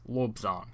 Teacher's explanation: the pre-initial labial stop ba can ride on that tailing vowel o